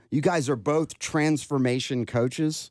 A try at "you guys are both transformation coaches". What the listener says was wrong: with the upswing and the question mark. Insinuating doubt?